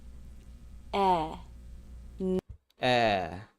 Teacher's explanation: The tongue tip is forward and down lightly touching the back of the bottom front teeth. The middle front part of the tongue lifts towards the roof of the mouth, but it doesn't get too close. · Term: e vowel